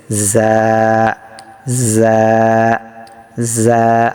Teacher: জায়ের মাখরাজটা হলো আপনার জিহ্বার আগা সামনের নিচের 2 দাঁতের আগার সঙ্গে লাগিয়ে সদ সিন জা